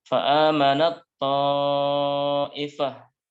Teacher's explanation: pertemuan antara ta bertemu dengan to. Ya, tak sukunnya dimasukkan ke huruf to menjadi fa'amanat ta'ifah. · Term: idgham kamil